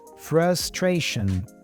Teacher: We have two schwa sounds here, frustration.